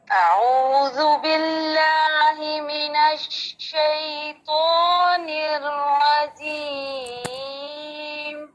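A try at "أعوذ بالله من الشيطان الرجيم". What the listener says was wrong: اچھا، اس میں الرجیم کو جو ہے اس کو اس کو را کو آپ نے ہونٹ گول کر کے نہیں پڑھنا.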